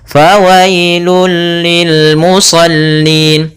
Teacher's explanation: langsung saja hanya idgham saja tanpa disertai dengan gunnah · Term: idgham bila gunnah